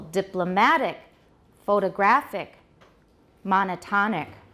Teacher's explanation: The stress is on the penultimate syllable.